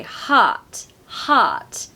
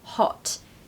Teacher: the American short O here is in the back of the throat. They say heart, heart, hot in British, hot.